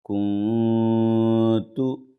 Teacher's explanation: کے بعد تا ہے بغیر تشدید والا حرف ہے اس لیے نون کی آواز کو ناک میں چھپا کر پڑھیں گے اخفا کریں گے